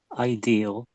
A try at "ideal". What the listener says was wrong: You missed out the L when you said it. So I think you said idea. I think it came out as idea.